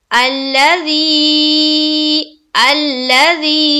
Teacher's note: الذی یہاں پر دیکھیے مد ہے، مد ہے نا، 3 سے 4 الف کے باقدر کھینچیں گے یعنی کہ 4 سے 5 سیکنڈ تک